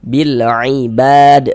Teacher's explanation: bad dibaca panjang. Ini namanya mad arid li sukun